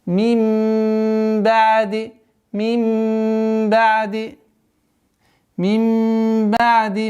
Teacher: Назализация в размере двух огласовок. Удержание.